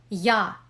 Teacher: Ya is a complex letter representing a combination of the fricative consonant y and the vowel a. This combination is somewhat similar to the beginning of the English word yummy.